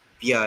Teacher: So this B was palatalized, and then you have bia instead of ba.